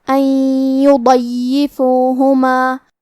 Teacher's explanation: کلمت ان کے آخری میں نون ساکن ہے، پھر حرف الیا ہے کلمت یضیفوہما، یا حروف الادغام بغنہ میں سے ہے، اور ادغام کا معنی ہے حرف کو حرف میں داخل کرنا، تو ہم یہ نون ساکن کو یا میں ملا کے غنہ اور تشدید کے ساتھ یہ حکم کو ادا کریں گے